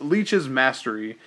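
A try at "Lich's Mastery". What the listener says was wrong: Every time you say it, it sounds like you're saying leash. Leash's mastery.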